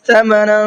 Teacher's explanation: تھوڑا سا ناک میں آواز کو روک کر کے پڑھیں گے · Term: اخفا کا قاعدہ